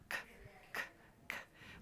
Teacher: Front, middle, or back? So it's more the back and the middle and the back of your tongue that's lifting up and dropping back down.